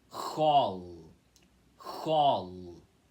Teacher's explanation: precisa puxar esse L do final, tá bom? L encostando a língua no céu da boca, tá? Então aqui, mesmo que a escrita da palavra pareça bem diferente, a pronúncia é parecida com hall, tá bom?